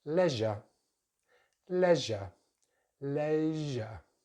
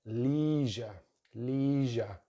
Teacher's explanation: Second syllable is just the schwa, we don't really pronounce the letter R here, leisure, leisure. Americans slightly different in their first syllable, they have a long vowel sound, the E vowel, so it's more like leisure, leisure.